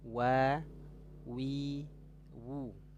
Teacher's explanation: huruf wau ini dia keluar makhrajnya dari dua bibir makhraj syafataini